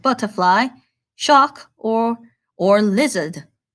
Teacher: In England, the Queen proclaims we aren't saying the R's in butterfly, shark, or lizards.